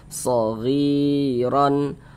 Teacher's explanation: Shaghiran, huruf ra kalau dia memiliki harokat fathah atau fathatain, ini baris 2 di atas huruf fathatain, maka huruf ra dibaca tafkhim, baca tebal